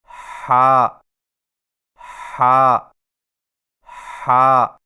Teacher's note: ہا کی ادائیگی میں زبان کی جڑ کو حلق کی طرف مضبوطی سے دباتے ہوئے باریک اور رگڑ کھاتی سانس میں پڑھیں